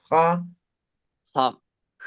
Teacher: Entonces como si fuera J, pero de forma fricativa. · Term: J aspirada